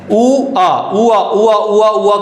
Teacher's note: उ और आ को मिलाया तो वा निकल आया, इसलिए इसको क्या बोल रहे हैं अपन, अर्धस्वर बोलते हैं।